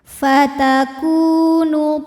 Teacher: Maka cara bacanya kaf dipanjangkan 2 harokat saja. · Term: mad tabi'i dhahiri